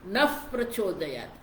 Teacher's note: विसर्ग के बाद प है, तो वो जो विसर्ग है उसका उच्चारण जब फ होना चाहिए।